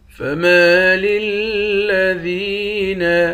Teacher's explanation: ذال کو یا کے ساتھ ملا کر یا کو ایک الف کے مقدار کھینچیں گے